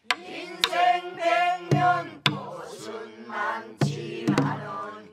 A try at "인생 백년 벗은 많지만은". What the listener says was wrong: 그거 아니야. 인생 백년 벗은 많지만은. 음이 안 맞아. 인생 백년 벗은 많지만은.